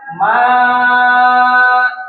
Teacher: Maka dengan adanya Hamzah ini maka dia naiklah layarnya menunjukkan panjang lebih dari dua harakat disebut dengan mad wajib muttasil.